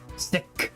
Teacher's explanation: the last K is aspirated